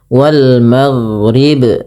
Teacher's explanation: itu ada bacaan namanya qalqalah. Qalqalah artinya memantulkan. Maka dia ba-nya bukan hanya sekedar wal maghrib, tapi mantul wal maghrib, ya, wal maghrib.